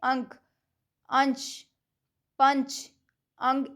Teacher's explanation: में नाक से हवा कम निकलेगी और मुह से ज्यादा पर अनुस्वार के उच्चारण में नाक से अधिक सांस निकलती है और मुख से कम